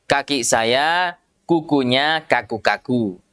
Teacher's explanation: Jadi tidak sama dengan huruf K-nya orang Indonesia, huruf K-nya kita ya. Kalau huruf K-nya orang Indonesia tidak ada aliran nafasnya.